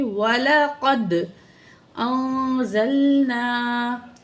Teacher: دال حروف قلقلہ میں سے ہے، قلقلہ کر کے پڑھیں گے، آواز ڈبل ہوگی.